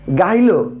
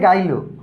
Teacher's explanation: যখন শব্দের মধ্যে হ লোপ পায় তখন এই বিষয়টাকে হকার লোপ বলে।